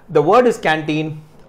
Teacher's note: the word is canteen, and the second syllable is stressed